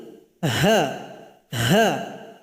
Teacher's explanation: Di mana keluarnya? Yaitu tenggorokan paling bawah. Jadi bunyi hurufnya seperti orang mengeluh. Ha. Ada bunyi hamas, nafas yang mengalir ketika membacanya. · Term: huruf ha